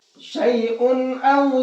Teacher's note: یہاں اس تنوین کے اندر ہم غنہ اخفا نہیں کریں گے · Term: اظہار